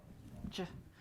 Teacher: That's the affricate. It's a quick push of air that has some friction in it when we make that sound.